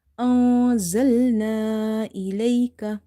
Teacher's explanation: After noon sakin, you see there is letter za, which is from the ikhfa letters. So we will hide the noon sound.